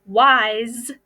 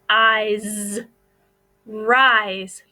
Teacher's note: if you listen to the word wise the S is making the Z sound because it has a vowel in front of it and the